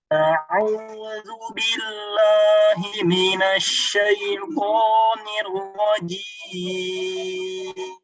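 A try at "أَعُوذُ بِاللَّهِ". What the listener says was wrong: Nah, la-nya ditipiskan sedikit. Billah. Billah.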